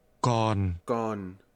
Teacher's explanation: Still is pronounced with a falling tone.